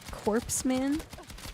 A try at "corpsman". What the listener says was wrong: No, it's like core. It's not pronounced corp. Like it's like the Marine Corps is Marine Corps.